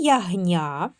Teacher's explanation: В слові ягня перед я приголосний Нь. Вимовляємо м'яко.